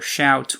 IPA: ʃawt